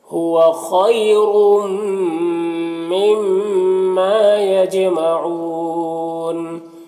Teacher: تنوین کے بعد حروف یومن میں سے میم ہے تو تنوین کو میم سے ملا کر غنہ کے ساتھ پڑھیں گے، اس کو ادغام ناقص کہتے ہیں، اور یہ میم مشدد میں غنہ ہوگا، غنہ حقیقی ہوگا تو اس کو یہاں پر ایک غنہ کریں گے، ایک الف کی مقدار اس کی آواز کو ناک میں گنگنا کر پڑھیں گے، اور یہاں پر الف مدہ ہے، ایک الف کے برابر کھینچیں گے۔